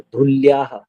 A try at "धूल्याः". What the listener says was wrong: फिर धू हरस्व हो गया। बलाघात करना है पर दीर्घ को ह्रस्व नहीं करना है।